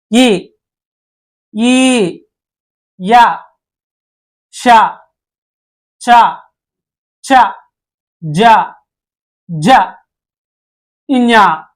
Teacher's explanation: అంటారు నెక్స్ట్ వచ్చేసి తాలవ్యాలు ఇ య ష ఛ ఛ జ న్ వీటిని మనం దౌడ నుంచి పలకడం జరుగుద్ది అందుకే వీటిని తాలవ్యాలు అని పిలుస్తారు